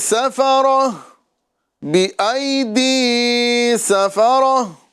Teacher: سین باریک اور را پر پڑھا جائے گا